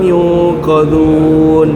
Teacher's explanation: Nun bertemu dengan qaf. Ikhfa hakiki dengung dua harakat.